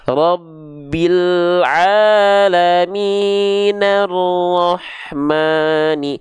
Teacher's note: Hamzah wasalnya enggak dibaca karena disambung dengan kalimat sebelumnya akhirnya di sini juga ada hukum alif lam Syamsi atau idgam